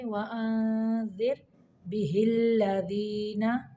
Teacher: वअंज़िर पे इख्फा का कायदा है। रा को यहाँ पे साकिन करते हुए बारीक पढ़ेंगे।